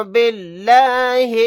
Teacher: لفظ اللہ کے لام کو یہاں پر باریک پڑھیں گے کیونکہ اس سے پہلے زیر ہے